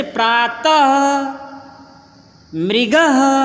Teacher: विसर्ग का प्रयोग उच्चारण के समय व्यंजन के साथ ह की ध्वनि देता है।